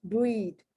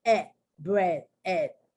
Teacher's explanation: that e a becomes much more closer to a short e sound